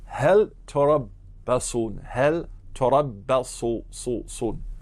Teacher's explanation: So here we see hel after ista or hamza, and we hear that the lam of hel, right, this article is mudahhar. It's clear. The hukam here is that after hel, there's any letter other than lam, wajib idhari.